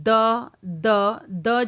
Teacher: द जब हम बोलते हैं तो द बोलने के लिए हमारी जो टंग है हमारी जो जीभ है उसे दांतों को स्पर्श करना पड़ता है। ऊपर के दांतों को तो इसलिए इसका स्थान क्या हो जाएगा? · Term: दंत्य